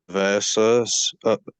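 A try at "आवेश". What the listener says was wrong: Avesha. so the line above it is the A with the line above it is A, and then S with a slash above it is SH. Avesha.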